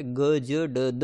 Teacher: महाप्राण के स्थान पर अल्पप्राण हो जाता है